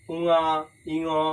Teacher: স্বরযন্ত্রে অনুরণিত ধ্বনি সেটা নাসিকা গহ্বরের মাধ্যমে কিন্তু বাইরে বেরিয়ে আসে, যার জন্য উঙা, ইঙ প্রভৃতি ধ্বনিগুলি নাসিক্য ধ্বনি হিসেবেই কিন্তু উচ্চারিত হয়।